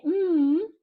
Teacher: in those nasal sounds most of the air is coming through the nasal cavity